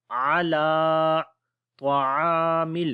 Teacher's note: عین کو لمبا کریں گے، الف مدہ ہے